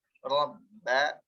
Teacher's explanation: Rohnya tebal, ba-nya tipis.